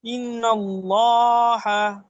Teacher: ধারাকাত তাড়াতাড়ি পড়তে হয় টান দেওয়া নিষেধ নুনের উপরে তাজদিদ এসেছে নুন তাসদিদ গুন্না করা ওয়াজিব নাকে তুলে এক আলিফ পরিমাণ গুন্না করে পড়বো